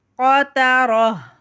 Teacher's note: یہاں بھی ہم نے وہی کیا، دو پیش کی تنوین ہے تا پہ، اس تا کو ہم جو گول تا ہے، اس گول تا کو ہم ہاں میں بدل کے پڑھتے ہیں وقف کرتے وقت